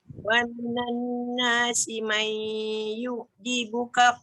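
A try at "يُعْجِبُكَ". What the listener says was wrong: sikit lagi ain yu'jibuka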